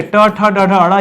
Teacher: ट ठ ड ढ ड़ ये मूर्धन्य होते हैं